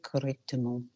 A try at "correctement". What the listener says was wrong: Not correctement, you're making it too clean. It's not correctement, correctement. It's about the vowel. Send it forward. Sing like I made Roscoe sing. Correctement.